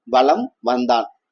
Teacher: ஆனா வளம் வந்தான் என்பதில் மகர மெய் எழுத்து அடுத்து வகர எழுத்து வருவதால் மகர மெய்யானது தனக்குரிய அரை மாத்திரை அளவிலிருந்து குறைந்து கால் மாத்திரை வருது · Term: மகர குறுக்கம்